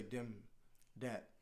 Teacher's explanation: the th sound isn't there so it made sense that they would say dim dad